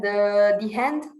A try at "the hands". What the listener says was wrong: Because you got the H, so the H is a consonant here, because you say hands. You don't say hand. So the hands.